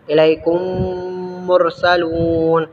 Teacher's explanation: میم ساکن کے بعد میم آئے تو دونوں کو ملا کر غنہ کے ساتھ مشدد ادا کریں گے۔ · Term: ادغام شفوی